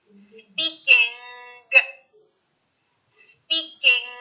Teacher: And you then have to force out the G sound. You say the N sound very quickly, and then you force out the G sound from the back of your throat. · That N that I'm saying right there, my tongue is not touching the top of my mouth.